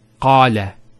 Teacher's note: Notice the elongation of the A sound.